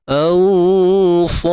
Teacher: Ra mati sebelum dia alif mat, maka ra ni perlu dibaca tebal.